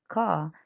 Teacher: the r sound in words like car typically pronounced as car the use of non rotic speech the r at the end of words is often not pronounced